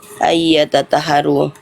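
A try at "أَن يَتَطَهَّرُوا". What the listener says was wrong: Talpo bukan tata. Talpo. Talpo. Tanya tipis, to-nya tebal.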